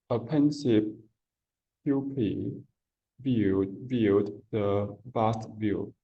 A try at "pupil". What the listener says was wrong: And so for me, what I heard in this word here is I heard poopy. Yeah, that's what you said. You said poopy.